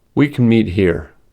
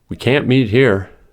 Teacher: the positive form, can, is normally unstressed and is pronounced as kun. But the negative form, can't, is stressed and so clearly pronounced as can.